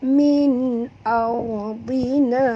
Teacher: Ra ini bila dia mati huruf sebelumnya baris atas, kita kena baca tebal